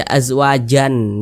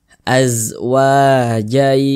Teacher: cara membacanya itu dengan cara memasukkan kemudian disertai dengan ghunah disertai dengan dengungan yang dimasukkan itu apanya bunyi tanwinnya bunyi tanwinnya itu dimasukkan ke · Bunyi tanwinnya itu dimasukkan ke huruf ya. Kita baca azwajai. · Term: idgham bihunah, idgham bi gunnah